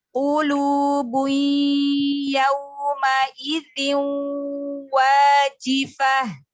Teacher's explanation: qafnya ditebalkan lagi, huruf isti'lanya huruf qaf.